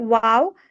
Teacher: দুই ঠোঁট মানে সামান্য ফাঁকা রেখে একটু গোল করে হবে ওয়াও। আর বা হলো ও ঠোঁটের ভিজা অংশ থেকে বা।